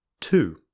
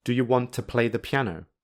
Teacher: to, which has a full vowel on its own, becomes the reduced t in the sentence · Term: weak form